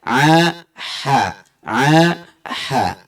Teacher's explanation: ha sama dengan huruf ain makhrajnya dari tengah tenggorokan.